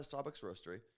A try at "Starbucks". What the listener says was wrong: Why do you keep saying it like that? You're saying Starbucks. No, you said SCAW. Twice.